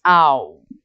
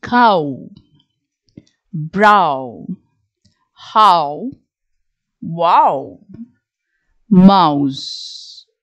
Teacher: Your diphthong, ow. Okay, you open your mouth to say ah, and then you round your lips, ow.